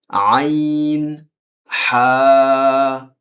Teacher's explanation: কন্ঠনালীর মধ্য থেকে উচ্চারিত হয়